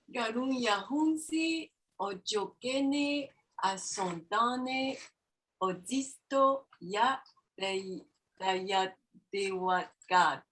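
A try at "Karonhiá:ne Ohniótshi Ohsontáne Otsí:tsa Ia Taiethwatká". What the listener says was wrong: Daya, put a break at Daya. Daye. Daye de what? Gato.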